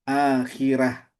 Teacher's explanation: bukan dibaca tafkhim tapi dibaca tarkik